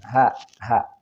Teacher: ha ini ada satu posisi dengan alif atau hamzah, yaitu di pangkal tenggorokan.